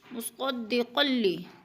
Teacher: قاف دو زبر تنوین کے بعد لام مشدد ہے تو ادھر ادغام کریں گے، لام کو جمع کر پڑھیں گے، اور قاف موٹے حروف میں سے ہے، پر کر کے پڑھیں گے۔